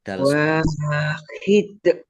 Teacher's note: Dalnya karena waqaf dibaca sukun dan dibaca qalqalah.